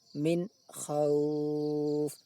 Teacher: Maka harus dibaca min, tidak boleh min ataupun min, harus min. Makhraj nun sukun dan makhraj kha jelas terpisah. Min khauf, seolah-olah berhenti sejenak. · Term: izhar halki